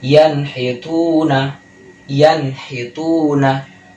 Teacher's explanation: sukun bertemu dengan huruf H dibacanya menjadi Ian hayatuna Ian hitunah transisinya cepat tidak ada demung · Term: izhar halqi